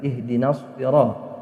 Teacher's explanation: Tidak dibaca panjang karena di depan huruf mad ini juga ada alif lam. Namanya alif lam syamsiyah atau idgham syamsiyah.